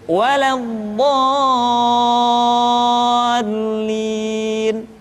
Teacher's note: Contoh Al-Haqqah, atau kalau dalam surat Al-Fatihah waladdallin. Dha dibaca panjang, suaranya tidak diayunkan karena setelah tanda panjang diikuti oleh huruf yang bertasydid.